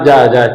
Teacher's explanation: इस प्रकार के व्यंजन के उच्चारण में पहले स्पर्श और बाद में क्या होता है, घर्षण होता है। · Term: स्पर्श संघर्षी व्यंजन